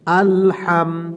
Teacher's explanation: এই হাটা উচ্চারণের সময় একটু বাতাস বের করতে হবে গলার মধ্যখান থেকে